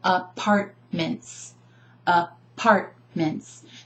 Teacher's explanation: I'm emphasizing the second syllable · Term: emphasis